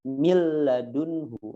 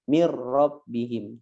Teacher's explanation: nun atau tanwin bertemu dengan ro dan juga lam tidak ada gunnah, artinya tidak ditahan ya. Contohnya adalah min ladunhu, min rabbihim, dimasukkan mil ladunhu langsung, mir rabbihim, tidak ditahan gitu ya. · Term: idgham bi ghairi gunnah